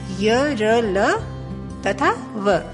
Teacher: इनका उच्चारण करते समय जिह्वा मुख के किसी भी भाग से स्पर्श नहीं करती। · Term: अंतस्थ व्यंजन